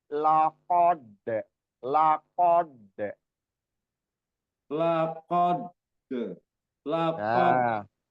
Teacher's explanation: Tebal dulu diqof baru ke dalnya tipis